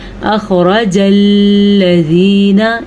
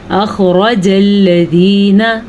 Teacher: الذین میں لام بالکل بھی پر نہیں پڑھنا اور لام پہ رکنا بھی نہیں ہے۔ اکثر لوگ پڑھتے ہیں اخرج الذین، یہ غلط ہے، لام پہ رکنا جائز نہیں ہے، لام پہ غننے کی کیفیت ہی نہیں بنتی تو ہم کیسے لام پہ رک سکتے ہیں؟